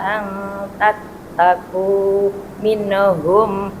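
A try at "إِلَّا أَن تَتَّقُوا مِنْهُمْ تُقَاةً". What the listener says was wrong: Nun sukunnya disempurnakan minhum. Nah ya dihilangkan minhum. Panjang tuqah. ketemu ha minhum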